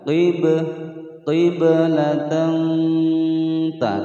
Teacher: ba berharokat sukun asli di tengah-tengah kalimat dipantulkan